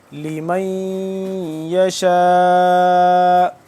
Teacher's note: کریں گے، اور اس کے بعد شین الف مد زبر شا، 4 سے 5 الف کے برابر یہ ہو گئی لمبی کیونکہ مد ہے